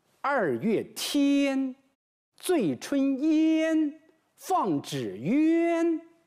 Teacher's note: 我们发音的时候啊，我们的舌头舌位非常高，所以仙韵给人一种非常尖利、高远这样一种感觉